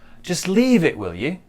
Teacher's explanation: Also, our intonation on you goes up. It's like a question.